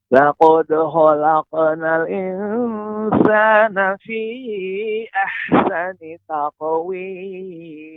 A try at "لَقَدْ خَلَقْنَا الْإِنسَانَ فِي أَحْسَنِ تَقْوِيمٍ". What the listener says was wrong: Bapak, untuk laqad itu dal ini tidak tebal, ya, maka pengucapannya laqad, laqad khalaqnal. Ketika qaf baru tebal. Laqad khalaqnal Silakan Bapak diulang kembali.